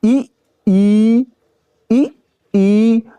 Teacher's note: जब हम ई का उच्चारण करते हैं तो हमारी जीभ क्या होती है ऊपर की ओर ज्यादा खिंचाव लेती है ऊपर की ओर उठती है